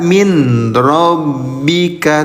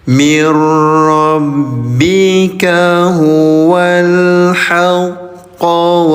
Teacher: Cara bacanya leburkan bunyi nun sukunnya. Jadi jangan dibaca min rabbika tapi lebur.